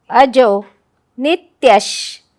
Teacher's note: त्यच्या विसर्गाचा हलंत श शहामृगाचा, कारण विसर्गाच्या पुढे शनी सुरू होणारं अक्षर आहे.